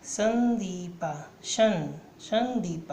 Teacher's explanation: ये अनुस्वार, ये नासिक ध्वनि है, इसका उच्चारण नाक से होता है। जैसे कि यहाँ दिया हुआ है संदीपा, संदीपा, है ना, ना से हो रहा है।